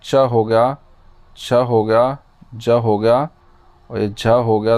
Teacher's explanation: च वर्ग का जो उच्चारण स्थान है वो क्या होता है हमारा? तालु। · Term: तालव्य व्यंजन